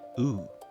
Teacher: when many Americans say ooh, their mouth shape shifts from relaxed to more rounded. During these shifts, the tongue also moves slightly forward.